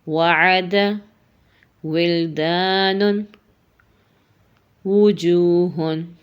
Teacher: ہمارے ہونٹوں کو گول کرنے سے واو ادا ہوتا ہے۔ ہونٹ پوری طرح جڑتے نہیں ہیں، گول ہوتے ہیں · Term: راؤنڈڈ لپس